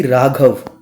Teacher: रा का भारी आवाज़ है, घ की भारी आवाज़ है, इसका वज़न दो दो हो जाएगा